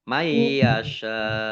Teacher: Yuk tihi hamzah ya, yuk tihi tak kasroh ya sukun mat tobi'i, panjang 2 harokat. Mayyasha, nun sukun bertemu dengan huruf ya, idgham bi gunnah, masuk dengan mendengung